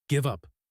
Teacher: The V flows right into the up.